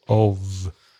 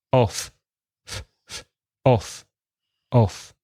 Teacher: If there's one F, of, then there's vibration in your throat. So you should be able to put your hand, do it now, put your hand on your throat, garganta, very gently, and say the word of.